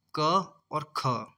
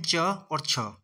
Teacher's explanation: प्रत्येक वर्ग का पहला और दूसरा वर्ण अघोष व्यंजन होता है